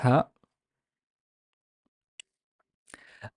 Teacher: basically your vocal cords are wide open and they allow all the air out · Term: voiceless glottal fricative